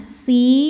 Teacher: sebab ada Ya Sukun sebelumnya berharakat kasrah maka Sin dipanjangkan dua harakat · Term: mad thi'i